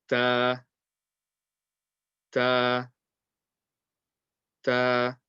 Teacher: the makhraj for the letter ta is the tip of the tongue touching between the gums and the teeth. No, sorry, yeah, between the gums and the top two teeth.